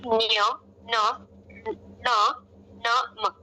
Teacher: इनका उच्चारण किसके द्वारा होता है? नासिका के द्वारा होता है।